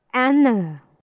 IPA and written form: ˈænə (Anna)